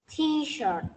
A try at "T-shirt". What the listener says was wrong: Chữ shirt này cô lưu ý là có âm T ở cuối cùng cơ mà. Again.